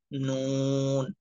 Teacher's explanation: নয় নাম্বার মাখরাজ জিহ্বার আগা তার বরাবর উপরে তালের সঙ্গে লাগাইয়া